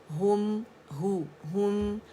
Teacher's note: ہم ہے باریک ہے، ہوم کر کے نہیں پڑھیں گے